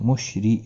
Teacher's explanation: را زیر کی وجہ سے باریک پڑھا جائے گا